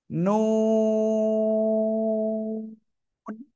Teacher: জিহ্বার আগা তার বরাবর উপরের তালুর সাথে লাগাবো, লাগিয়ে দুই ঠোঁট হালকা গোল হবে, গোল করে উচ্চারণ করব। এক, দুই, তিন, চার, চার আলিফ টেনে পড়বো।